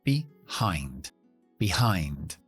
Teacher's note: Todo lo que termina en IND siempre se pronuncia IND. Así que acentuamos la segunda sílaba en esta preposición, behind, y la primera sílaba que no está acentuada es una E que se podría convertirse en una schwa o se podría convertirse en una I.